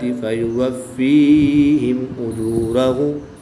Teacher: غنہ نہیں کریں گے بلکہ میم ساکن کو خوب ظاہر کر کے پڑھیں گے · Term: اظہار شفوی